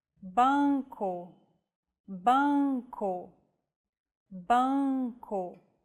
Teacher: seem a little tricky to correctly produce nasal vowels you should relax your soft palate and the back of your tongue so the nasal passage is not blocked it's like humming with your mouth open and adding the vowel